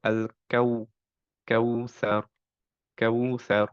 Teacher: একটু বেশি টাইম দিব এখানে সো আমরা পড়বো আল কাউস ওকে কাউতে একটুক্ষণ টাইম দিব আচ্ছা এবং বাতাস বের হবে না